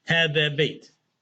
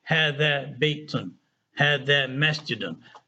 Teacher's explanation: when you say the word by itself, or at the end of the sentence, you don't really have to pronounce that last vowel.